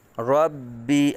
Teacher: با رب کے اندر با حرف مشدد ہے، قلقلہ جماؤں کے ساتھ ادا کریں گے